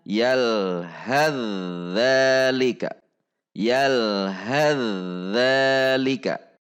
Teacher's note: Jadi fa sukunnya tidak terbaca karena sudah dilebur ke huruf dzal. Dileburnya secara kamil atau secara sempurna. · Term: idgham mutajanisain